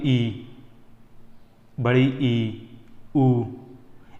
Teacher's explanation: जैसे कि आप बोलिए ई, बड़ी ई, ऊ, ये सभी आपके इनमें अपना मुख मतलब पूरी लगभग लगभग बंद रहता है, मतलब थोड़ा सा बस हवा निकलती है सिर्फ मुंह से · संतृप्त मतलब क्लोज, जिसको बोलते समय मुख अपना बंद रहता है, मतलब लगभग लगभग बंद रहता है।